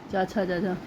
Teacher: च वर्ग च छ जा यह सब तालू से बोले जाते हैं